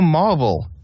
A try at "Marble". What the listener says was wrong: Marble, like the stone. It sounded like Marvel, like the comic.